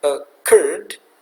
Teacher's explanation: contoh kata occurred, stresnya di suku kata yang kedua